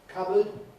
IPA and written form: ˈkʌbəd (cupboard)